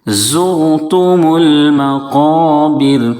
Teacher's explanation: را ساکن سے پہلے پیش ہے، اس لیے را کو پر پڑھیں گے۔ زور اس طرح سے موٹا کر کے ادا کریں گے۔